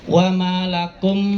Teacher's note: Idgham mimi karena ketemu. Jadi mimnya masuk, memasukkan. Wa ma lakum, jadi mingkem kurang lebih 2 ketuk.